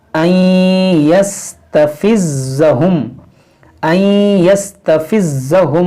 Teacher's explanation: ज़ा मुशद्दद है, तो इसको पढ़ेंगे 2 बार